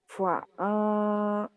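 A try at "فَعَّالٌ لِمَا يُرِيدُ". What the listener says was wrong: ada bukan fa'a agak kayak dihentak. Iya, ada tasdid. Fa'alul tasdid.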